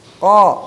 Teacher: karena si ko itu hurufnya al-isti'la, harus terangkat ke atas langit-langit. Ko, ka turun.